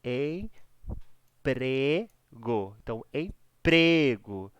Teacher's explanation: a sílaba mais forte é o pré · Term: paroxítona